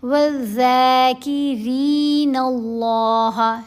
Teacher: کھڑا زبر ہے ذال کے اوپر، نرمی سے پڑھتے ہوئے ذال کو لمبا کریں گے، را کو باریک پڑھیں گے، لمبا کریں گے۔ وَالذَّاكِرِينَ اللَّهَ، لفظ اللہ کی لام کو موٹا پڑھنا ہے۔